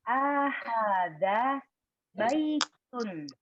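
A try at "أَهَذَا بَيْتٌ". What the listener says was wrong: Nah, bukan Bu, intonasinya salah, Bu. Di sini A-nya pendek, Bu ya. Dan intonasinya tadi salah. Ahada baitun. Jadi A-nya pendek.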